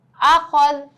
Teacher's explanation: جب ہم زبر زیر پیش پر وقف کرتے ہیں حرکات پر یعنی کہ جب ہم وقف بولیں گے تو ہم آخری حرف کو ساکن کر دیتے ہیں، یعنی آخری حرف کی صرف ہم آواز نکالیں گے، اس پہ لگی حرکت کو ہم نہیں پڑھتے